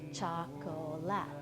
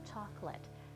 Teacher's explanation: We all say chocolate, as if there are only 2 syllables and not the 3 that it looks like.